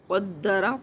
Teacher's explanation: قاف قلقلے کے ساتھ، دال بھی آپ نے یعنی قلقلہ کرنا ہے، شد کے ساتھ ہے، ویسے جزم نہیں ہے۔